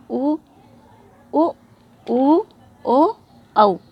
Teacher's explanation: अपने जो होठ हैं वो गोल होते हैं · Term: वृत्ताकार